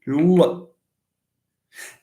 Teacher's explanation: But notice, please, that when you move from L to L, what happens? The tip of the tongue moves backwards to touch the velum. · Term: velarization